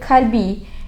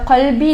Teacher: qof tempat keluar huruf tersebut dari pangkal lidah dan di langit mulut